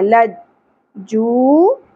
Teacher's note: واو ساکن حرف مدہ ہے، ایک الف کے برابر کھینچیں گے